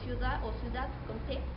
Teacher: en la D se puede hacer que o bien pierde el sonido o bien se cambia a una letra T